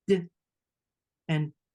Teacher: they're very clipped, and you won't hear that extra vowel sound at the end of the consonants.